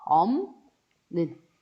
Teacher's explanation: 업는 발음되고요. 비읍과 니은이 만나서 비읍이 같은 위치에 있는 비음, 미음으로 연결이 됩니다. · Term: 비음화